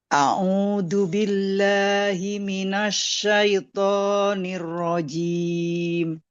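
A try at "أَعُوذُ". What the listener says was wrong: A'udzu. Za-nya itu hembusannya harus jelas. Agak lebih ya, agak lebih kuat sedikit, jangan mirip dengan huruf da. A'udzu billahi.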